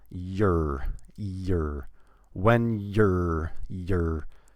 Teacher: most of the time, we don't say any vowel. Just a Y and the R sound.